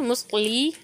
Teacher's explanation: लाम को मोटा नहीं पढ़ना बल्कि लाम को बारीक पढ़ना है